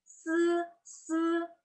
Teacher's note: Kalau S, yaitu yang dipakai adalah lidah dan gigi atas. Lidahnya ditaruh di gigi atas.